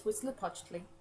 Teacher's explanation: When you see an HUI like that in Nahuatl, it's actually pronounced like a W. So you don't actually have to say the H.